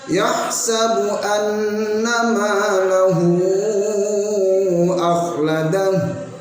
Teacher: Bacanya betul tapi dengungnya yang hilang, menjadi kurang betul pula, menjadi tidak betul juga, sehingga seharusnya yahsabu anna ada dengungnya, satu alif pada dua harokat